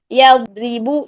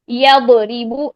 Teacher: करना हमने क्या कहा था नरमी से आवाज को चलाना है इसमें आवाज जारी रहती है सांस बंद होता है लेकिन आवाज जारी रहती है